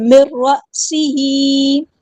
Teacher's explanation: نون ساکن کے بعد را ہے، ادغام بلا غنہ ہوگا، ہم نے 2 کاؤنٹس رکنا نہیں ہے